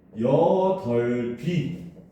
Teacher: 겹받침 중 뒤에 자음만 다음 음절의 첫 소리로 옮겨서 발음을 합니다.